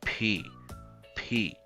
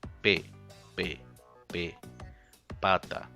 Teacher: So we don't say like P, we don't say P only, we say P, right? So that short puff of air at the end of the sound is the aspiration, the P, P. Not the same like in Spanish, which we only say pata, right?